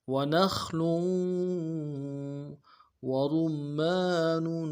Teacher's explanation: لام کی تنوین کو واو کے ساتھ ملائیں گے ۔ وَنَخْلٌ وَرُمَّانٌ وَرُمَّانٌ، اگلے واو کو نون سے ادا کریں